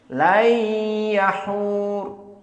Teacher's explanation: Dan nanti akan datang juga layyahur, layyahur tanpa idgham, afwan, tanpa gunnah. Adapun qiraah jumhur layyahur, ada 2 harokat gunnah